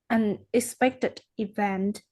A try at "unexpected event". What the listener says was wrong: Okay, the last time the word un here is a little bit soft, so I couldn't listen to it. All right, so make sure each and every sound is stressed with enough force, right?